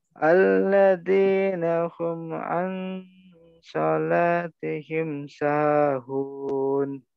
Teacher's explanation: Jelas tidak boleh ada dengung, tidak boleh ada jeda. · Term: izhar syafawi